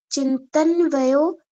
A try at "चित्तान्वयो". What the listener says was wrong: देखो आ का उच्चारण करना, प्रोनाउंस करना, चित्तान्वयो हो गए और प्रदुर नहीं हो गए, प्रादुर्भाव निरोध क्षण चित्तान्वयो निरोध परिणाम।